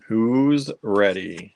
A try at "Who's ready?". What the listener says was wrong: Say it with conviction. That sounded like you're gonna doom them. You have to do like they're gonna ready to rumble.